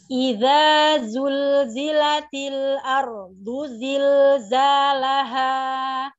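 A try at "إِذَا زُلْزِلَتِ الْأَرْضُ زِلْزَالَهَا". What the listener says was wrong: Zain jangan di zilza, itu terlalu takaluf. Lebih light, lebih apa ya? Tidak terlalu ditekan. Ardu zilzi, jangan z, ada suara batuan zil.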